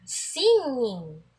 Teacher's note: paraan po nito ay pailong tunog ay dadaan sa ilong pero nasa likod pa rin ang pagdikit